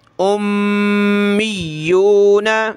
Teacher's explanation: میم پہ یہ تشدید آ جائے تو غنہ ہوتا ہے، تو میم کو اور یا کو ہم نے سخت کرنا ہے تشدید کی وجہ سے، میم پہ غنہ کرنا ہے